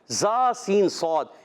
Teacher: زا سین صاد، ان کا مخرج زبان کی بالکل باریک نوک اور اوپر اور نیچے والے دانتوں کے اندرونی کنارے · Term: حروف صفیریہ